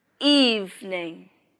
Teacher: In this word, the stress is on the first syllable.